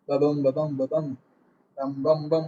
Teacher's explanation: ஒன்று வந்து அன்ஸ்ட்ரெஸ்டா இருக்கும், ரெண்டாவது வந்து ஸ்ட்ரெஸ்டா இருக்கும். ஸோ அது பார்க்கும்போதே வந்து பார்த்தீங்கன்னா ஏத்த இறக்கமா வந்துகிட்டே இருக்கும். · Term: Iambic pentameter